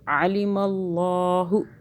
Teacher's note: اللہ موٹا ہو گیا، اللہ سے پہلے زبر آیا